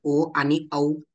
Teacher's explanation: कंठोष्ठ कंठ आणि ओष्ठ असे दोन्ही उच्चारण स्थान आहेत